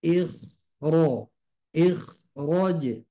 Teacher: Jadi khusus kondisi untuk huruf kho, untuk kondisi yang keempat, ketika di depannya adalah huruf ro, maka kho-nya tebal.